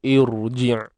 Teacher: ra mati sebelumnya hamzah wasal, confirm. Pada ra tersebut perlu dibaca dengan tebal.